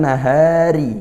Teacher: rnya kasrah maka kita baca tipis · Kemudian nahari, hati-hati ra-nya kasrah, maka kita baca tipis ya, ra-nya tarqiq ya, maka lidahnya diturunkan kalau tipis